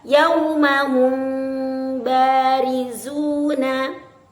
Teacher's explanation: itu disebut dengan hukum Ikhfa Syafawi cara membacanya adalah ee ee menyamarkan huruf mim ke dalam huruf ba